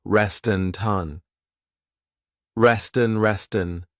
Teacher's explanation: I'm linking the 2 words together and I'm transferring the T sound onto the vowel